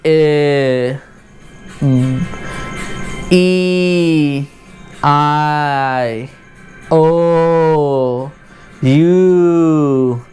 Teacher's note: न लिप्स बंद हो रहा है, न टीथ आपस में बंद हो रहा है, न टंग ऊपर जाके रास्ता बंद कर रहा है, कोई भी रास्ता नहीं रोक रहा हवा का. जो हवा का झोंका आ रहा है वो बिना रुकावट के बाहर आ रहा है.